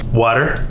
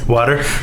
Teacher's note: it sounds like there's a D instead of a T